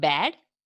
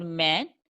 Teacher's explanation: the point of maximum constriction is made by the coming together of two lips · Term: bilabial sounds